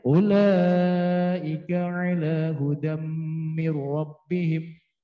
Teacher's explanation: melebur harokat tanwin kepada huruf mim disertai dengan sekurangnya 2 harokat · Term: idgham